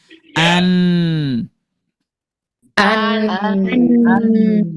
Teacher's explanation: nempelnya bukan ke tempat pertama tumbuhnya gigi, tapi lebih ke dalam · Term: huruf nun